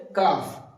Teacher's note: কাফটা অফের থেকে জীবের কিছুটা সামনে থেকে একদম শেষ প্রান্ত থেকে নয় কিছুটা সামনে থেকে উচ্চারিত হবে